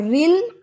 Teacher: اور رل، یہ را نیچے زیر ہے تو یہ باریک ہے، اور رل لام باریک ہے کیونکہ لام کبھی بھی موٹا نہیں ہوتا سوائے اس میں جلالہ یعنی اللہ کے نام کے علاوہ